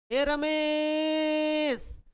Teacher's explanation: किसी को दूर से बुलाया जाता है, रमेश तुम कहां हो, ए रमेश। तो रमेश के ए को खींच दिया तो रमेश का ए प्लुत हो गया।